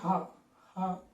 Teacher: ఆ నాదతంత్రులను అక్కడ గాలిని ఒకేసారి మనం రిలీజ్ చేస్తే హ అనబడే అక్షరం వస్తుంది గొంతు దగ్గర నుంచి. కాబట్టి హ హ కంఠం దగ్గర వస్తుంది కాబట్టి దీని గురించి వివరంగా చెప్పుకుంటే నాదతంత్రుల గురించి కూడా మనం వివరంగా చెప్పుకోవాలి, ఆ క్రమంలో చెప్పుకోవచ్చు. · హ అనేది వీటిలో ఎక్కడా ప్రయత్నం లేకుండా ఓన్లీ కంఠం దగ్గర మాత్రమే దాని యొక్క ప్రయత్నం ఉంటుంది. అంటే కంఠం దగ్గర మనకి నాదతంత్రులు అనేవి ఉంటాయి, అంటే 2 మాంసపు ముద్దలు వంటివి. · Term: కంఠమూలీయం